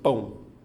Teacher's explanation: pão tá vendo é uma sílaba só como já tinha falado a letra A vai ser sempre vogal então a letra O só pode ser uma semivogal tem um som mais fraco então obedecendo a estrutura que eu coloquei então eu tenho ditongo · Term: ditongo decrescente nasal